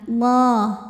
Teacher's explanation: Lam pada lafaz Allah dibunyikan secara tafkhim sebab huruf sebelumnya berbaris fathah. Maka dibacanya tebal, pangkal lidah dinaikkan.